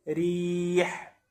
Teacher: يرقق الراء وترقق قولا واحدا اذا كانت مكسوره